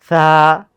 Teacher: হা হচ্ছে গলায় প্রেসার দিচ্ছি, আর সা হচ্ছে আমরা জিহ্বার আগাটাকে উপরে দুই দাঁতের সাথে মিলায়া একেবারে পাতলা করে পড়তেছি